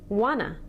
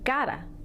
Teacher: we reduce many common forms of English, in particular, forms with to, which sounds like ta in a sentence